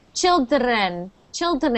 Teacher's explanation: I'm hearing a little bit of a roll in your tongue.